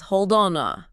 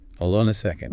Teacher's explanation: The D is completely attached to the O, and then the word on glues to the word A. So, the N sound jumps, too.